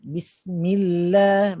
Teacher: Lam muraqqaqah, lam yang nipis. Dia tak tebal. Kalau saya baca Bismillah, itu lam yang mufakhamah, lam yang tebal.